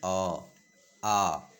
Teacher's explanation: आ का उच्चारण स्थान क्या है कंठ है।